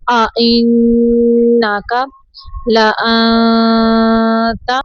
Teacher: حمزہ کو جھٹکے سے پڑھنا ہے